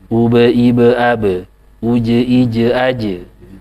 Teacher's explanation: Mantul ya. Mantul ketika sukun atau disukunkan karena waqaf. Ya, pantulannya sama dengan ba ya, tipis. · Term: qolah